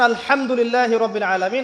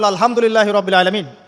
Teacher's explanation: এই হা এর মাখরাজ কোথায়? হা এর মাখরাজ কোথায় বলেন একজন? কণ্ঠনালীর মাঝখান থেকে। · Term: হায়ে হুত্তি